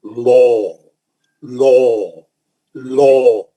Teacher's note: تھوڑا کیا کریے، لام پہ جب آتے نا، تھوڑا زبان کو اوپر اٹھا کے، زبان کی نوک کو اوپر کی طرف اٹھا کے، منہ کو اچھا ذرا گول کر کے اس میں تھوڑا گونج پیدا کی